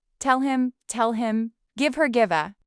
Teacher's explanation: Dropped H in pronouns